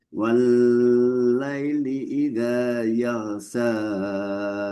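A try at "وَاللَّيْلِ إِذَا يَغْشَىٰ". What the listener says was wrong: Yaghsha, yaghsha. Wal-laili idza yaghsha. Sya lebih tersebar Sya, sya.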